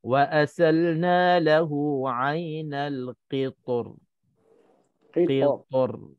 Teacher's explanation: Selepas pada kita muncung pa tu, kita kena tarik bibir mulut kita, lebarkan, senyum sikit untuk kita nak tipiskan ra.